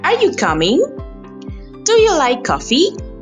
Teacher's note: Your voice goes up because you want an answer. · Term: rising tone